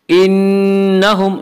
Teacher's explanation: نون مشددہ غنہ ہوگا، ایک الف کی مقدار یہاں غنہ کریں گے